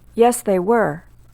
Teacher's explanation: was and were are of course stressed at the end of a sentence when no word follows